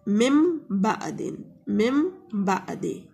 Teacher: نون ساکن یا تنوین میں جو چھپا ہوا نون ہوتا ہے، تنوین کے بعد اگر ہمارے پاس با آ جائے تو ہم نون ساکن اور تنوین کو میم سے بدل کر غنہ کے ساتھ پڑھتے ہیں، اور علامت کے طور پر چھوٹی سی میم بھی لکھی جاتی ہے. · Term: اقلاب